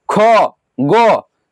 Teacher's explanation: गो कंठ को स्पर्श कर रहा है।